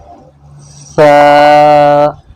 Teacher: یہ زبان کی نوک اوپر کے جو دو دانت ہیں ان کے نیچے لگے گی تو یہ سا نکل جائے گا